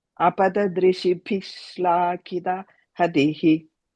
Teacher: After the D, you add a ish to join instead of the visarga there.